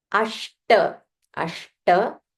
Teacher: This sh is, it's called retroflex sh. You have to roll your tongue